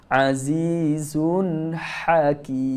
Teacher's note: Huruf ha tengah halkum, seringaikan mulut.